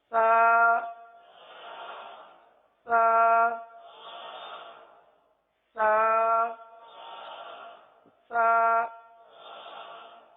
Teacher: سا پڑھتے وقت زبان کا جو سرا ہے, زبان کا جو سرا, اس کو اٹھا کر آپ نے اوپر کے سامنے کی جو دانت ہے اس کے اندرونی کنارے پر اس انداز سے لگانے ہیں کہ سختی کے ساتھ نہ لگے. اس کو نرمی کے ساتھ اس طرح لگائیں کہ گویا کہ سانس جاری ہو رہا ہو, گویا کہ سانس جاری ہو رہا ہو، اس طرح سا سا سا سا۔